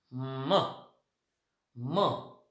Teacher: आणि फायनली म is nasal, कारण हा साऊंड आपण म्हणजे उच्चारत असताना आपल्या नाकातून पण हवा जाते · पहिलं लेवल म इज व्हॉइस्ड. म इज बायलेबियल, कारण दोन ओठांच्या साह्याने हा साऊंड तयार होतो